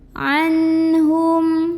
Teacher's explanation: Maka cara membunyikannya adalah nun sukunnya ini dibunyikan dengan jelas. Jadi bunyinya bunyi an dan tidak ditahan. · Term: izhar halqi